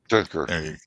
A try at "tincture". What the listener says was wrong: Tincture. Not tinker. Tincture. Add chur at the end of tincture. It's Ture. Tincture. Chur. Tincture.